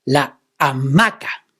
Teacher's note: Hamaca is a word that has the stress on the second vowel, ma.